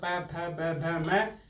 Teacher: और प फ ब भ म होठों से स्पर्श हो रहा है इसलिए इनको ओष्ठ वर्ण कहते हैं